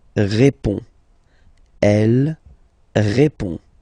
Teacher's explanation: So, final D is not pronounced. You only have this on nasal sound at the end.